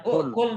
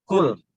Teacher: Bukan ukul tapi hamzahnya hilang.